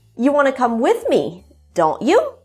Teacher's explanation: the intonation rises in the end of the statement and then falls at the beginning of the question and rises again at the end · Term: tag questions